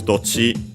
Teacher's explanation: for dochi is actually accent on the first syllable